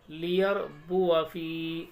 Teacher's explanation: लियरबुआ फी, पढ़ना क्या चाहिए था लियरबुआ, वाव के बाद अलिफ है, खींचना चाहिए लेकिन नहीं खींचते, लियरबुआ फी, इस तरीके से पढ़ेंगे लियरबुआ फी।